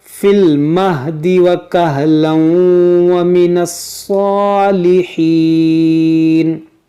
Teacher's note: یہاں پر دیکھیں ہماری سانس ٹوٹ گئی، تو ہم اس کو پڑھیں وَكَهْلًا، کیونکہ یہاں پر دو زبر تھا، اور دو زبر پر جب وقف کیا جاتا ہے تو اس کو الف سے بدل دیا جاتا ہے، وَكَهْلًا۔ اب ملا کر پڑھیں گے تو پھر ادغام کریں گے، کیونکہ تنوین کے بعد واو ہے